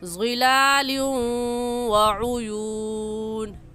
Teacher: تو فی ظلال، اس تنوین پر ہم غنہ کریں گے اور غنے کے ساتھ ادغام بھی کریں گے، کیونکہ ہم قاعدہ پڑھ چکے ہیں کہ تنوین کے بعد حروف یرملون میں سے واو آ جائے تو غنہ کرنے کے ساتھ ساتھ ادغام بھی ہوتا ہے